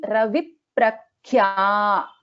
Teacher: So there is a doubling of the consonant happening, which is the first consonant, which is pa.